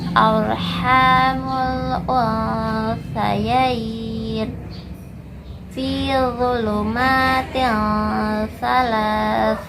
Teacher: makhraj huruf sa, yaitu ujung lidah menempel pada ujung gigi seri atas, lidahnya sedikit keluar.